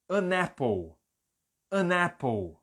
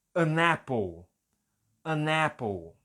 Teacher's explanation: Olha como eu estou emendando. O N está ligando no A e está ficando ané.